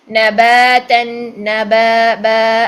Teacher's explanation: الف مدہ، ٹھیک ہے. 2 کاؤنٹس لمبا کرنا ہے، اسے چھوٹا نہیں کرنا